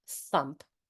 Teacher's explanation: And there's a lot of tongue between your teeth. There's air in it. There's a certain amount of pressure, but no sound. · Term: unvoiced th